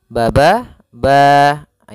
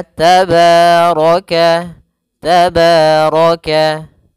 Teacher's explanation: Mad thabi'i panjangnya yaitu dua harakat.